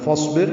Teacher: صاد ساکن ہے، اس پہ ہمس ہوگا